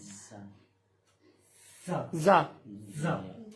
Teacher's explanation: زبان کی نوک اور دونوں دانتوں کے درمیان سے ادا ہوگی، ہاں دونوں دانتوں کے اندرونی کنارے سے۔